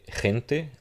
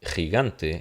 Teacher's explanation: Entonces la G suena GJ en estas circunstancias.